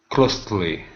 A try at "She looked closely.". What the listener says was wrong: So close is the verb when we say z, but close in this instance it's our adverb. So this is she looked closely.